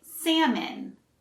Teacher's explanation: again the l is silent so we say salmon and the second syllable sounds more like min instead of an